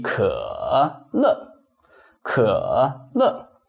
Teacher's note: third tone changes into semi-third tone when it goes with another syllable.